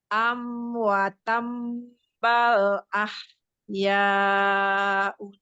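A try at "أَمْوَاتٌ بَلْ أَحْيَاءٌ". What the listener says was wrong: Uanya panjang ya Umi.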